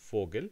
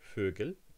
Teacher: to turn Vogel, bird, into Vögel, birds, you change this vowel into its rounded version.